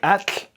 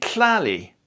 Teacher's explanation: It's not a sequence of t plus l, as in Huxtable, but instead it's an affricate. So it's actually a laterally released, not a literally released, a laterally released affricate. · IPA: /t͡ɬ/